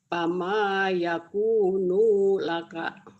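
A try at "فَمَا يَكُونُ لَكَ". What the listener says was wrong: Pendek dulunya. Ayo, yang panjangnya ya Ibu ya.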